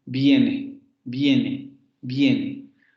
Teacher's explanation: la vocal cerrada anterior aparece antes de esa é entonces esa vocal se convierte en una semi consonante